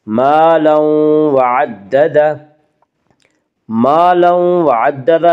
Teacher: الف مدہ کو 1 الف کے برابر کھینچ کر پڑھیں گے